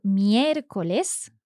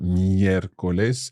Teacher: Yes. So again, our accent sits on that first E in the word miércoles. And we are stressing the third last syllable, or the antepenultimate syllable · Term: esdrújula